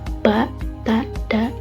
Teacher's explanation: Contohnya itu ada ba, ta, da. Jadi ada udara yang tertahan gitu lalu dilepaskan secara tiba-tiba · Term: letupan